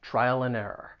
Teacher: with and, I'm going to reduce it so it just sounds like n